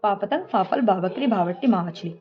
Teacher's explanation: उच्चारण कैसे होता है ओस्ट के द्वारा दोनों ओठों के द्वारा दोनों ओठों के द्वारा इसका उच्चारण होता है